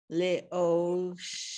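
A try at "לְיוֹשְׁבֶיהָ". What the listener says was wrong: No, there's a yud first. Le'yo. Because there's the yud is there. Even though there's not a vowel under the yud, the O goes with the yud. So it makes it a consonant, not a vowel.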